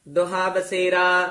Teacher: ਦੁਹਾ ਛੇਤੀ ਉਚਾਰਨ ਕਰਨਾ ਦੋਹਾ ਨਹੀਂ ਕਹਿਣਾ ਹੋੜੇ ਨਾਲ